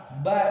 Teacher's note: Ba ini adalah cara menyebutnya, kita mingkemkan kedua bibir untuk menyuarakan suara huruf ba